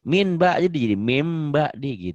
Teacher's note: kalau nun mati ketemu ba bunyi n-nya berubah jadi m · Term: iqlab